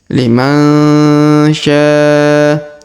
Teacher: Huruf nun sukun bertemu sya maka didengungkan dan disamarkan.